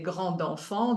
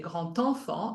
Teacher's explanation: So for example, when you have an enchaînement, you say grand enfant, the D is pronounced the way it's spelled. But for liaison, you would say grand enfant, and then the D is pronounced like a T